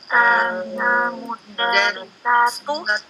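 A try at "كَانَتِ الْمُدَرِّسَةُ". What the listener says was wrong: Iya, kanal mudarrisatu. Ini bukan mudarrisatu nih, salah. Al mudarrisatu. Domanya satu. Al mudarrisatu.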